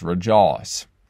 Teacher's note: we also have the oi sound going into a great ah sound